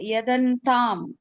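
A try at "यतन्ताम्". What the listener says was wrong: See, when we are reading Sanskritam, don't say like Tamil, yadantam, yatta, ta, that is ta. Yatantam. Yatantam. Yat to try. So yatantam.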